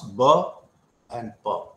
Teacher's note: they are pronounced both by using the two lips so bilabial sounds